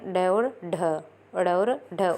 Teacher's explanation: उत्क्षिप्त जो हमारी जीभ के उल्टाव के साथ में पैदा होती हैं